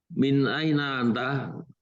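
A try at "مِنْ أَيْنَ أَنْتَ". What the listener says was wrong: Pertanyaannya nggak seperti bahasa Indonesia Pak ya. Min aina anta, jangan gitu, intonasinya dirubah. Min aina anta.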